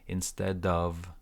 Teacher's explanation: And the second piece was that instead of hiring, it's like one word linking here, instead of, and of sounds like v, no o, no f, of.